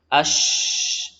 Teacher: Oleh karena itu ada sifat terusan khusus untuk huruf shin disebut sifat tafasyi, yaitu udaranya menyebar ke seluruh penjuru rongga mulut · huruf shin, ya, yang mana dua sisinya adalah punggung lidah bertemu dengan langit-langit atas, dan jumlah udara pada huruf shin ini cukup deras.